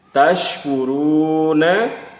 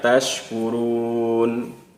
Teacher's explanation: Huruf nun pada akhir bacaan barisnya tidak kita baca.